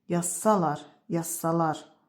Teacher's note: Şərt şəkli özündən sonrakı hecaya vurğunu ötürə bilir. · Yazsalar sözündə vurğu sona düşür.